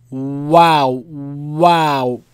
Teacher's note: For wow, the lips don't contact each other, right? There's an opening.